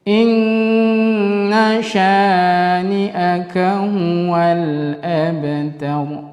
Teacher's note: Nun yang bertasydid maka dibaca dengung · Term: gunnah musyaddadah